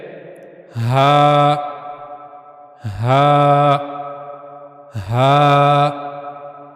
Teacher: हा को अदा करने के लिए गले का सबसे निचला हिस्सा इस्तेमाल होगा।